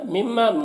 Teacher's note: متصل ہے، او میں واو لین ہے، اسے جلد پڑھنا ہے، مما مشدد غنہ کے ساتھ پڑھیں گے اور الف مدہ ہے